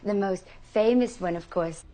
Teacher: Listen to the tiny little sort of catch breath right after the word most here.